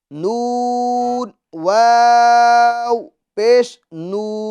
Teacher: یہاں پر واو مدہ ہوگا اور اس کو ہم ایک الف کی مقدار کھینچیں